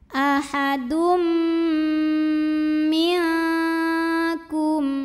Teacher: Karena ada tanwin dhammah bertemu huruf mim, maka tanwinnya lebur ke mim masuk ahadum dan dengungkan, bunyi M-nya tahan. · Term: idgham bi gunnah